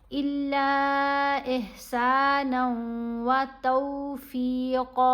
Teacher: ये मद मुत्तसिल है, इसको हमने 5 अलिफ की मिकदार जितना लंबा पढ़ना है